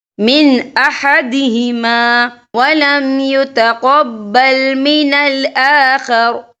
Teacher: یہ دیکھیں من، یہاں نون ساکن ہے، نون ساکن کے بعد جو ہے حمزہ آ رہا ہے، اور حمزہ جو ہے حروف ہلکی کا ورڈ ہے، تو ہم یہاں اظہار کریں گے، ہم اسے بنا غننے کے پڑھیں گے